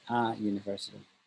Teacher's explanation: the u in university is pronounced with the long u which sounds like you and is written as a j in the phonetic alphabet